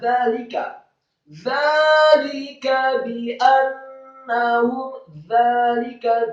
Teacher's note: dzanya tipis, lidahnya agak keluar sedikit, fathah 2 harokat, kemudian lamnya kasrah 1 harokat, kemudian kafnya dibaca tipis, fathah 1 harokat.